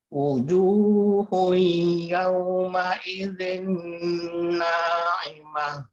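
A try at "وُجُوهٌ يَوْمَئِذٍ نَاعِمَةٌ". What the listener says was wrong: Ju-nya terlalu panjang, Pak.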